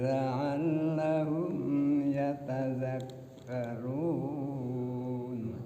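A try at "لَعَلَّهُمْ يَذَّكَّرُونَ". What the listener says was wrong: Bukan yatadzakkarun, yadzakkarun. Hilang, enggak ada taknya. Yadzakkarun. Taknya enggak ada. Yadzakkarun.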